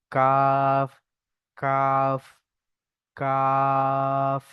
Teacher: জিভের গোড়া থেকে একটু আগে বাড়িয়ে তার থেকে উপরের তালুতে টাচ করতে হবে